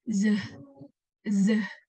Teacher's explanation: the vibration of the larynx can be detected while producing the sound z.